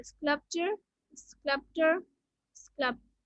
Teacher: In all three words, the stress is on the first syllable.